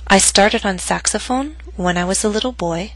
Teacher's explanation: note that my voice went down on boy, but not to its lowest pitch, because the statement is not complete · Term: rising intonation